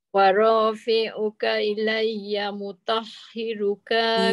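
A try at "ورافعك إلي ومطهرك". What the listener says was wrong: hmm, panjang tu. Wa mutahhiruka minalladzi. Dua-dua ka tu pendek. Dia hujung kalimah nak pergi kalimah sebelah tu jangan panjang. Dia bila panjang dia jadi jali sebab dia tertambah huruf.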